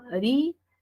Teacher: ¿Dónde lleva la mayor fuerza de voz? Ah, en la segunda sílaba. · hay una secuencia de vocales donde lo que se manifiesta es un hiato acentual